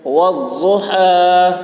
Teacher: ضاد کی آواز موٹی ہوگی. والضحى ہا کو حلق صدا کریں گے.